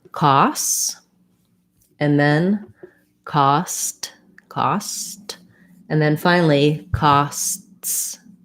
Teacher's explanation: In case you're wondering, the vowel in costs is an ah vowel. You could rewrite it like AW, ka.